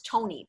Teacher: for the Tony, you have to curl your tongue, pull it back and up. It goes Tony, pero en español la lengua hace Tony y sale. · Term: American T